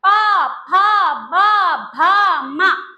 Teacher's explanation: दोनों होठ मिल रहे हैं ना, ये होठों को मिला मिला के आती है फैमिली, तो ये होते हैं होठ से।